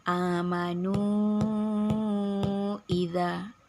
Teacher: Panjangnya adalah 2 sampai 5 harokat, 2 sampai 5 ketukan. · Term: mad jaiz munfasil